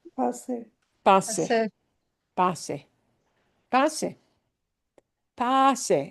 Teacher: we have more punch on the pa